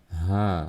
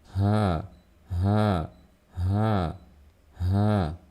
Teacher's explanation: Sifat yang pertama yaitu hams, harus terdengar ada suara aliran nafas, ya.